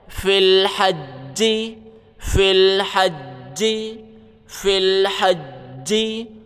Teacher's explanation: جیم کے اوپر تشدید ہے، سختی کریں گے۔ ہا جیم زبر حج، جیم زیر جی، ہا جیم زبر حج، جیم زیر جی۔